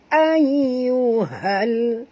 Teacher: ha sini ha simpul, bunyinya daripada halkum